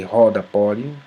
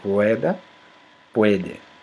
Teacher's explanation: Conserva seu vocalismo latino em oposição às línguas que ditongam o e e o o breves